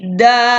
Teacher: Dia ada alif kecil, da-nya kita bunyikan 2 harakat.